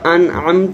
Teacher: آگے انعمت ہے تو یہاں پر نون ساکن ہے، آگے عین حرف حلقی ہے تو یہاں پر جو ہے غنہ نہیں ہوگا، اظہار ہے